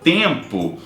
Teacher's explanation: quando a gente fala tempo a gente não escuta o som do M da forma que ele é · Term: nasal